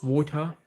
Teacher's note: We make this sound by quickly closing the throat. and then releasing the air. It's like a tiny light cough. It often replaces the T sound.